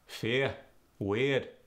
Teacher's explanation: ear changes to iya